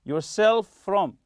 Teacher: as if it's one letter f one sound like that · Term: linked